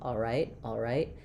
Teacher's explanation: I'm just making the dark L with the back of my tongue